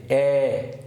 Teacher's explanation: জিহ্বাটা থাকে আমাদের দেখো সম্মুখে অর্থাৎ আমাদের জিহ্বাটা সামনের দিকে থাকে